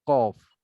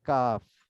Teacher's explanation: আচ্ছা, এখন আমরা 4 নম্বর মাখরাজ বলেছিলাম, জিহ্বার গোড়া তার বরাবর উপরে তালুতে লাগিয়ে কফ। তা জিহ্বার গোড়া তার উপরে তালুতে লাগিয়ে কফ, আর তার একটু উপরে তালুতে লাগিয়ে কাফ